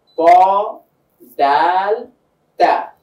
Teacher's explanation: তটা কিন্তু একটু আওয়াজটা মোটা হচ্ছে, দাল বলছি তার থেকে একটু চিকন হচ্ছে, তা বলছি পুরোটাই চিকন ভাবে আসছে। এই যে হরফের একটা ভিন্নতা, এই ভিন্নতাটাকে বলা হয় সিফাত।